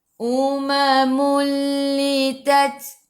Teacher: Ta sifat hurufnya hamas kena ada sedikit sahaja angin.